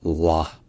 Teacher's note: Donc là, encore une fois, c'est le nom d'Allah, donc il y a un L qui est long, un L qui est emphatique, puis une voyelle A qui est longue,